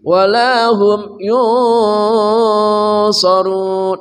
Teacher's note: nun mati bertemu sad ikhfa haqiqi, samar dan dengung